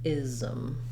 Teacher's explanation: We have the voiced Z sound for the letter S, ism, ism. You might even have a little bit of a schwa sound in there, ism. Just not too long of a syllable.